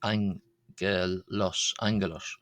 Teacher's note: So, like an ng sound for the first g there in Greek